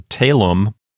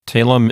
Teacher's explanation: Talum is only two syllables, so the accent will come on the first syllable. Whenever you have a two-syllable word, it just automatically comes on the first syllable, because in Latin we don't put the accent on the last syllable.